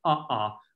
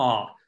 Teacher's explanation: two vowels ah separated by a glottal stop